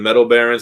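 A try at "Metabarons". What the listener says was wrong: There's no L. Sound like you said Metal Baron.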